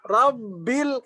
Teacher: ba yang pertama ketika disukun dia sidah dan jahar